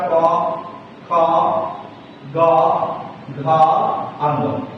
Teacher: ये कंठ से जो है हमारा क वर्ग का उच्चारण होता है